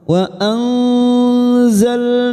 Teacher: Wa anzalna minal mu'sirati ma'an sajjaja, wa nun sukun bertemu zain ikhfa hakiki kita samarkan bunyi nun sukun 3 harokat